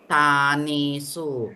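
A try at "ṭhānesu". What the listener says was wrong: Not tane. The A is also long. So it's tanesu.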